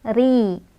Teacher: Ri dibaca secara tarqiq karena roknya barisnya di bawah atau kasrah. Cara bacanya ri ini dibaca secara tipis ya.